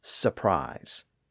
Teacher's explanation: most people tend to drop that first R sound and just say surprise · But even in regions like North America, where the R's are usually pronounced, the first R in surprise is often dropped because it appears so close to that following R